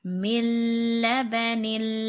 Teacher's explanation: the noon is going to be silent. So we're going to just put an extra count on that lam. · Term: silent noon